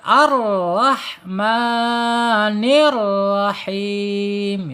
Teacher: tebal dan getarannya sedikit ya, 2 saja, tidak boleh melebihi lagi dari 2 ya